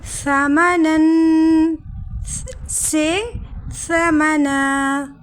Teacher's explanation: دو زبر کی تنوین پر وقف کرتے وقت ایک زبر نکال دیں گے اور ایک الف کے برابر کھینچ کر وقف کریں گے، یعنی تنوین بدل جائے گا حرف مدہ میں، جیسے ثمناً سے ثمنا۔ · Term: مد عوض